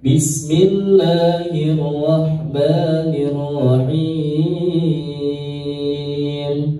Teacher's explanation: basmalah dengan nadanya naik ya, kemudian dihimnya turun.